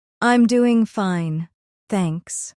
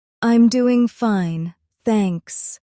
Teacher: A simple statement. I'm doing fine, thanks. The voice comes down at the end.